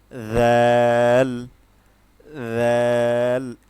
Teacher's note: জাল হচ্ছে আমরা যখন উচ্চারণ করি, জাল হচ্ছে সবসময় নরম থাকবে, জালের উচ্চারণ সবসময় নরম হয়। যেমন জিহ্বার আগা থেকে উচ্চারণটা আসবে, যেমন জাল, জাল, একদম নরম হবে।